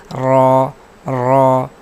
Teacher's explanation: ساتویں قسم ہے تکریر، یعنی را کے ادائیگی کے وقت زبان کے کنارے میں کپ کپی سی ہونا. را را تو زبان کی کنارے میں کپ کپی آتی ہے، لہٰذا صفت تکریر را میں پائی جاتی ہے.